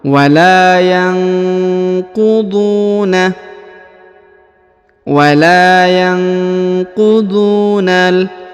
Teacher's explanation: huruf dhu dipanjangkan 2 harokat karena di depannya terdapat waw sukun atau waw mati.